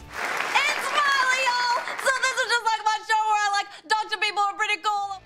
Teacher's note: she nailed the singer's southern twang and slightly nasal sound